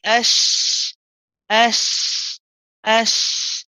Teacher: It's a rahawa letter, which means we've got to stay on it and we'll have to prolong it. We keep it running for a bit.